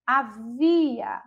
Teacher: Havia, a gente já percebe que a sílaba tônica é a sílaba vi.